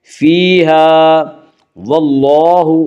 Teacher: واللہ میں اللہ کا لام پر پڑھا جائے گا